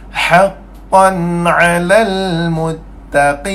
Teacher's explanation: Khaysum. Tempat parking khaysum, anggota hidung. Sifat dia gunnah.